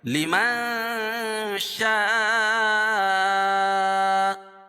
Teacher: مد متصل میں طول ہے اور توسط اور قصر تینوں جائز ہے، لیکن طول افضل ہے